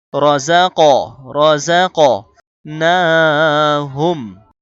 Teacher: রজাক, রজাক নাহুম, কলকলা, কফের উপরে কফ তো বা জিম তাহলে এই পাশের উপরে সাকিন হলে কলকলা করতে হয়, কফের সাকিন হয়েছে কলকলা করতে হবে। রজাক, রজাক নাহুম, না তো একালিপ টান।